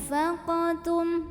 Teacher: bunyi nun sukun ini dibunyikan samar-samar, jadi nggak jelas n, melainkan mau bilang fa sambil ada dengungannya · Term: ikhfa